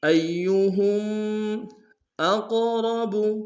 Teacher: قاف کو موٹا ادا کریں گے، را کو موٹا ادا کریں گے